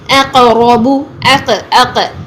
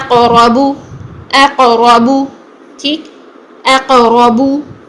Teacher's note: आगे देखिए, अक़रबू, अक़, अक़, हमज़ा को मोटा नहीं करना है, कॉफ को मोटा करना है